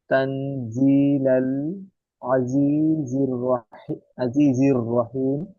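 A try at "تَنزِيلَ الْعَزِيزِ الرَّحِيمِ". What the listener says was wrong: মাশাআল্লাহ, ঠিক আছে, ভেরি গুড।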